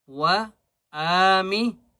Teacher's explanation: حمزہ کو ایک الف کی مقدار کھینچ کر پڑھیں گے اور نون کو بھی ایک الف کی مقدار کھینچ کر پڑھیں گے